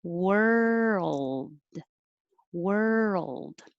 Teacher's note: if i was going to make the d i would release it with a sound but i'm not going to · it looks like or but it's er again so world were your tongue is curled back like where were you were and then it needs time to move forward behind your top front teeth and hold it there